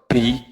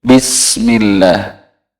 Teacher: Huruf ba itu udaranya tidak banyak yang keluar, jadi tidak terlalu medok. Bi, jadi harus di tengah-tengah.